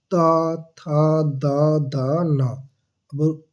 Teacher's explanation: अब त बोलिए, त, आपकी जीभ जो है आपके दांत को टच करेगी। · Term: दंत वर्ण